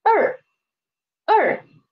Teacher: we have no initial here and the final is er and the tone is fourth tone